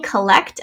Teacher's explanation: we have a schwa in the first syllable. And then ect.